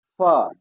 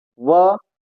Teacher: फ में बोलते समय होठों को आकार मिलता है थोड़ा और व को बोलते समय होठों को थोड़ी सी गोलाई मिलती है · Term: दंत ओष